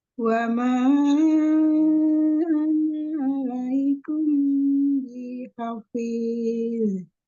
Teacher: Naknya dibaca pendek karena kita wasal bacanya.